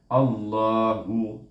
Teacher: A di sini ditasydidkan dengan huruf lam di sini, jadi nama Allah ini bunyinya baris atas, Allah, tebal, baca dengan tebal, baca dengan tebal lam tu, kemudian 2 harakat